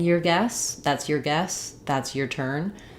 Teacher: unless I'm um stressing on the word your it's often going to be reduced to sound more like you're